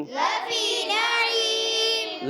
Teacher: لفي نعيم، لام کو نہیں کھینچنا، اس کا خاص خیال رکھنا ہے، لفی کا لام بالکل نہیں کھینچنا